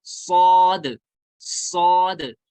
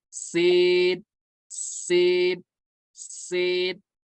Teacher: تو سین اور صاد میں فرق اس طرح ہوگا، صاد کو ہم پر پڑھیں گے، فل ماؤتھ کے ساتھ پڑھیں گے